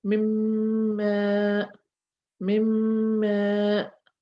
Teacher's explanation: It has no vowel on it. So we drop that nun and we will join the meme with the next meme. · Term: idgham